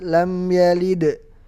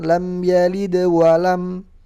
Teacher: Kalau kita berhenti lam yalid, dia jadi qalqalah kubra. Kalau kita wasalkan lam yalid walam, jadi qalqalah sughra. Jadi qalqalah sughra kubra pembagiannya adalah ketika dia waqaf atau wasal.